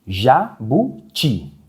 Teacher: Nós vemos que a sílaba mais forte é a última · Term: oxítona